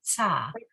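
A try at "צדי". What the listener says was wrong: Sa. But you got to hear the T before the S. so Sadi. Sadi.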